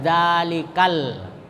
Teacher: qamariah Jadi kalau lam qamariah itu dibaca Dibaca lamnya ya tapi alifnya tidak dibaca kalau kita sambung dengan huruf sebelumnya